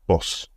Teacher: In the north, it's shorter and more rounded than in the south.